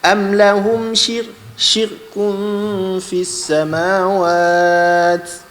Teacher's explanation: Baris bawah bertemu dengan ra mati, kena nipiskan.